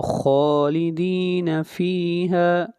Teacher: خا کو موٹا پڑھا جائے گا، خا حروف مستعلیہ میں سے ہے